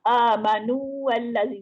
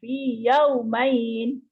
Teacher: Apa yang dimaksudkan sebagai tamkin di sini ialah menetapkan huruf mat dengan erti kata tidak mengidghamkannya kepada huruf selepasnya. Oleh itu huruf waw dan ya ditamkinkan dengan dipanjang dua harakatnya demi menjaga huruf tersebut dari diidghamkan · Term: mat tamkin